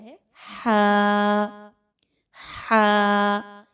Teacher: हा जो है वह हलक के दरमियानी हिस्से से अदा किया जाता है